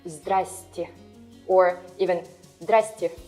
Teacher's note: It's more like a slang word, and it happens because of reduction of vowels in syllables.